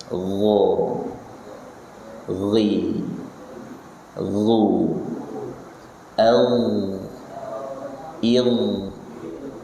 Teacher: Dia lebih halus daripada G, tapi dia termasuk jajaran huruf tebal. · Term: ghain